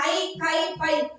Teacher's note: இப்ப கவனிங்க முதல் பகுதி பாயிண்ட் பாத்தீங்கன்னா ஐ கை பை ஆகிய எழுத்துக்கள் ஆகிய ஐகார எழுத்துக்கள் தனக்குரிய இரண்டு மாத்திரைகள முழுமையாக ஒளிக்கிறது · தனித்த இடங்களில் வரும்போது மட்டும், தனியாக சொல்லும்போது மட்டும் ஐ, கை, பை அப்படின்னு சொல்லும்போது மட்டும் தன்னுடைய 2 மாத்திரைகள் குறைவது கிடையாது, முழுமையாக ஒலிக்கிறது.